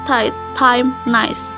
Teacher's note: This diphthong begins with open vowel which is between front and back. It is quite similar to the A of the word cat, ban.